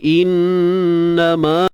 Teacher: nun bersabdu kita dengungkan dua harakat. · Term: wajib dengung